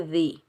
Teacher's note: زال کو ہم نرمی سے ادا کریں گے، زال کے نیچے زیر بغیر کھینچے پڑھیں گے